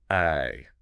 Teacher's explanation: your tongue is pretty flat, and the sound is short. It's almost a lazy sound, a quick I. I think of it as being really clipped.